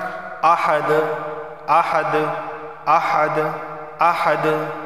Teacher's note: یہاں دیکھیں دال حروف قلقلہ میں سے، حروف قلقلہ 5 ہیں، با جیم دال قاف تو، تو یہ دال بھی حروف قلقلہ میں سے ہے، تو وقف کی صورت میں یہ دال ساکنہ بن رہا ہے، تو اس صورت کے اندر آواز مخرج سے ٹکرائے گی